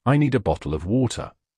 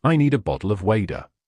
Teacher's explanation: >> To make this sound correctly, you simply tap the tip of your tongue against the roof of your mouth and let your breath flow. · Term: flap T